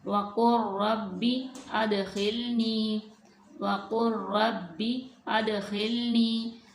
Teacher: यहाँ पे लाम और रा इकट्ठे आ गए हैं, लाम पे साकिन है, रा के ऊपर तशदीद है, तो जब हम इसको अदा करेंगे तो लाम को रा में मुदगम कर देंगे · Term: इदगाम मुतकारिबैन